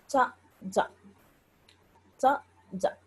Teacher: కాబట్టి ఈ లక్షణం వలన అది కేవల దంత్యం కాదు, తాళువుతో పాటుగా దంతస్థానంలో కూడా నాలుక తగలడం వలన అది పుడుతుంది · నాలుక ఉచ్చరించేటువంటి సమయంలో, ఆ వర్ణాన్ని పలికేటువంటి సమయంలో నాలుక చివరి భాగం దంతాల దగ్గర తగలడము, దాన్ని ఆధారంగా చేసుకొని ఇది దంత్యము అని చెప్పి చెప్పినారు అనమాట. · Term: దంత్య చజలు